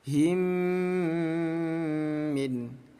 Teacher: ini cara bacanya kita dengungkan dua ketukan ya.